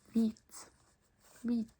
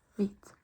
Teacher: almost all the Norwegian asking words also start with an H, then a V. We only pronounce the V.